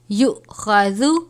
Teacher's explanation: حمزہ ساکنہ ہے جھٹکا دے کر پڑھیں گے